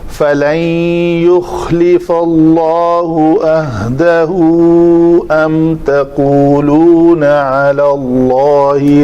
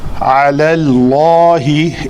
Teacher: دوبارہ پڑھتے ہیں، فَلَن يُخْلِفَ اللَّهُ عَهْدَهُ أَمْ تَقُولُونَ عَلَى اللَّهِ مَا لَا تَعْلَمُونَ۔ علی اللہ، اس لام کو پتلا کر کے پھر اس میں جلالہ کا لام پر پڑھنا ہے کیونکہ ماقبل زبر کے ساتھ ہے